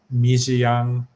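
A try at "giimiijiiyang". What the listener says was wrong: Right, Gimi Jiang. Now remember, you need to pronounce those each of those syllables. Gimi Jiang. Don't say Gimi Jiang, meaning we took a poop. Gimi Jiang, not Gimi Jiang. See, you just did it. Hey, Gimi Jiang, not Gimi Jiang.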